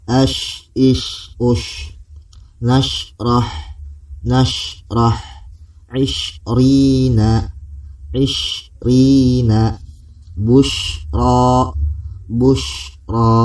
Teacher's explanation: Kalau kita artikan, yaitu menebalnya hamburan, menghembusnya hamburan udara suara pada mulut saat membunyikan huruf shin. Jadi udara tuh banyak keluar karena letak makhraj huruf shin itu tengah lidah mengarah kepada langit-langit. Ash, itu udaranya banyak. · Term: tapasyashi